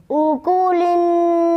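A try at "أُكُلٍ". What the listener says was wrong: शाबाश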